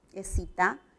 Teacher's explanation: La misma cantidad de fonemas y notamos que excita, aquí, ec, cuando digo ec, estoy articulando el sonido K, y acá excita, estoy con la S, con el fonema fricativo alveolar sordo